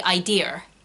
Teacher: What Brits tend to do is they then add R's where there aren't any. So a lot of Brits with English accents will say idea.